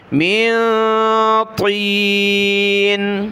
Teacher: اس کو تا باریک نہ پڑھیں، تین نہیں بلکہ من طین